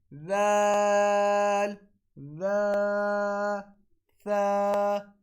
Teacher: جب ہماری زبان کی نوک ہمارے سامنے والے دو دانتوں کی نچلی نوک سے لگے تو ذال ذا اور ثا ادا ہوتا ہے